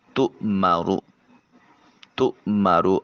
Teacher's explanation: حمزہ کو جھٹکے سے ادا کریں گے، حلق سے آواز نہیں نکالیں گے۔